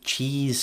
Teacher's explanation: when when pronouncing that vowel say cheese for the camera and you should feel that your tongue is relatively high and forward so that's a close front vowel